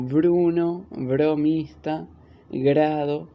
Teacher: en los grupos BR, CR, DR, GR, PR, TR, se une el sonido de una consonante con el de la letra R. En ellos, la R suena suave.